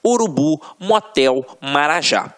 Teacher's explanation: você vai perceber que realmente a pronúncia da última sílaba ficará mais forte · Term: oxítonas